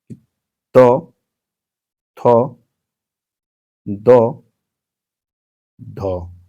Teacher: तो थ जो है आपका दंत में आता है।